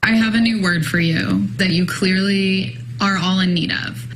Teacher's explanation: oh she got the vocal fry going